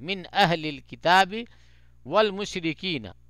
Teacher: یعنی نون کو ایک دم صاف نون کی ہی آواز پڑھیں گے, اس کو کوئی ناک میں آواز چھپائیں گے نہیں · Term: اظہار